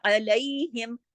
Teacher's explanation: عین حلق سے پڑھا جائے گا، اس کو الف کی طرح یا حمزہ کی طرح نہیں پڑھنا